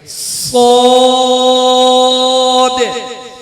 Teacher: शुरू में सीटी की आवाज पैदा होगी, फिर इसको मोटा करेंगे।